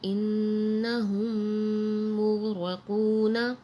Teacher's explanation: میم ساکن کے بعد ایک اور میم آ رہی ہے تو یہاں غنہ ہو رہا ہے، اور قاف موٹے حروف میں سے ہے تو اسے موٹا پڑھا جا رہا ہے، اور یہاں غین بھی موٹے حروف میں سے ہے مغرقون۔